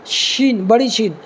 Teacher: بڑی شین جو ہے نکالنے کے لیے جو زبان ہے نا، زبان کا جو بیچ والا حصہ، یعنی درمیان میں جو زبان کا درمیان والا حصہ جو ہے زبان کا، اوپر کے تالو کے بیچ والے حصے میں لگانا ہے، یعنی اوپر کے تالو کے درمیان والے حصے میں لگانا ہے، تب جا کر کے شین نکلے گا.